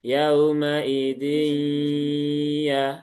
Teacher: Jadi separuh masuk di nun, masuk ke rongga hidung, separuh lagi masuk ke huruf ya. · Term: idgham naqis